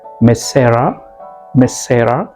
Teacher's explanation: it looks like that you dropped One S sound